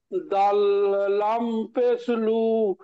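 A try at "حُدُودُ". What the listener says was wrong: দাল লাম পেশ, শোনেন, তখন এটা ভুল পড়েছে, দাল লাম পেশ দুল হবে, দাল লাম পেশ লু হয় না, তাহলে হুদুলু হলো। দাল লাম পেশ দুল।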